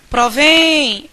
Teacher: Olha que sílaba tônica é a sílaba mais longa é provém essa sílaba final que se prolonga durante mais tempo